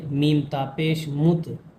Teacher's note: یہاں پر تا کے اوپر تشدید ہے، اس لیے میم کو تا میں ملائیں گے